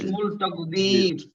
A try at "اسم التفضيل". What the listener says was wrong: ইসমুল না কিন্তু ইসমুত।